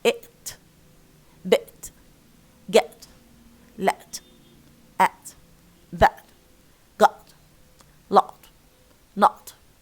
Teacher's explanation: most of the cases we find that ta is pre-glottalized